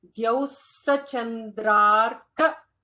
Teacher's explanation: So Dhyau, like D-H-Y-O-U or D-Y-O-U. Dhyau, notice that Visarga followed by Sa, so you have to add an extra sibilant there.